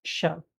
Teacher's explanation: the third sound for e griega ya is sha, which is very Argentino, which we call as variedad rioplatense.